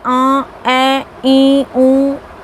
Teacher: अनुनासिक स्वर, जिनके उच्चारण में कोवा बीच में लटकता रहता है, अतः हवा का कुछ अंश नाक से भी निकलता है। हिंदी में जैसे आ, ए, ई, ऊ आदि स्वर ऐसे ही हैं।